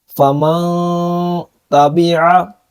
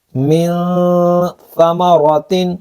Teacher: ہم نون کی آواز کو ناک میں لے کے گئے ہیں، غنہ کر کے پڑھا ہے، کیونکہ نون ساکن کے بعد حروف اخفاء میں سے تا آ رہا ہے۔